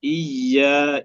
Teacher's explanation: إياك وإياك لا نقرأ بالسكون وإنما تشديد الياء مع فتحها